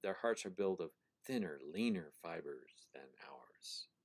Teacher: Notice how thinner has an accent on the first syllable. So does leaner. So does fibers. They all have a pattern of accented, unaccented, accented, unaccented. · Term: trochaic rhythm